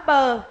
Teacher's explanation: khi phát âm bờ luồng hơi bị cản lại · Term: phụ âm